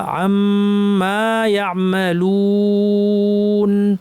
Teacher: মিমটা লম্বা করতে হবে, এবং এরপর আলিফ আছে এটাও টানতে হবে, আম লম্বা, তারপরে মা লম্বা, আম্মা ইয়ামালুন, পুরোটা পড়ি।